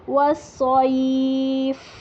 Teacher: फा पे हम वक्फ करेंगे, हुरूफ हम्स में से है, इसकी एयर को वाज़े करेंगे